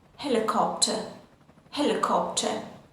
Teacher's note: In British English, we don't pronounce the r sound